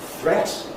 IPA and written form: θret (threat)